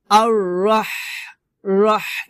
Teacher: হলকের মধ্যখান থেকে আপনাকে বাতাস বের করতে হবে, চিকন বাতাস বের করে উচ্চারণ করতে হবে